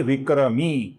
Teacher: जिसमें वी ह्रस्व है और मी दीर्घ है